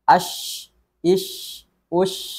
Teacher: ada sebaran udara ketika kita membaca huruf syin ini · ada sifat tambahan pada huruf shin ini yakni adalah tafasyi atau udara yang menyebar.